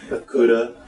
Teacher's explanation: it's almost like a d cuz it's not trilled very much trilled right yeah but it there's a stop in it it's